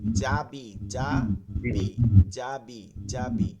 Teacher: ঠিক একইভাবে উচ্চারণটা হবে জিমের ক্ষেত্রে। জিহ্বার মধ্যখানটা, এটা বলার সময় মধ্যখানটা উঠে যায় তালুতে।